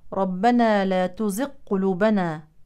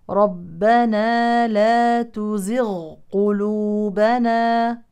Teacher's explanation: لا نقول ربنا لا تزق قلوبنا ولكن لا تزغ لا تزغ نبين اولا رخاوه الغين ثم نبدا مع القاف